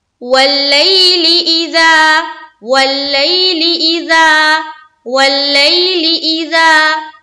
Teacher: زا کو ایک الف کے بقدر کھینچنا ہے، الف مدہ کرنا ہے.